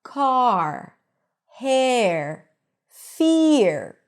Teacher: this R is pronounced only in American English. In British English, you actually don't hear the R here.